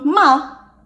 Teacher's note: you changed the fourth tone ma it means to scold